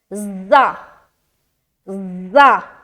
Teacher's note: اس میں صفیر والی صفت پائی جاتی ہے اور صفیر کے معنی ہے کیا؟ سیٹی نما.